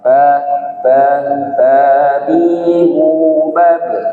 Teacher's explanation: dia dah jadi otomatis harus harus monyong auu auuah huruf ba huruf ba itu bibir bibir bagian luar